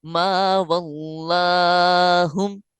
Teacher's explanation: ما واللہم میں الف باریک پڑھا جائے گا کیونکہ الف سے پہلے والا حرف جو ہے وہ باریک ہے. اسی طرح لام باریک پڑھا جائے گا کیونکہ اللہ کا لام نہیں ہے، لہذا ما واللہم.